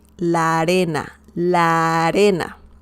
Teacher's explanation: You pronounce like a very long A